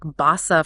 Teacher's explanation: a single s for a softer almost like a z sound